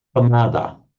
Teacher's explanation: So you hesitate over the p. You simply double it by saying Appamada. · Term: double P